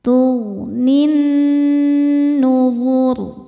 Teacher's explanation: Karena nun bertasydid. Cara bacanya didengungkan. Tahan dengungannya kurang lebih dua harakat. · Ketika berhenti di huruf ro, rnya disukunkan, dibaca secara tafkhim. Sebab huruf sebelum ro yang disukunkan berharakat dommah. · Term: ghunah musyaddadah